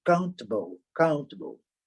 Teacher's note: E mais na frente, o table, ele quase não é pronunciado.